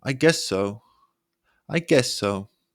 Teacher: so in a flat tone now say it again Rising your pitch on so to sound unsure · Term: rising pitch